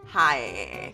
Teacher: I feel like Michigan's typical accent is very nasally.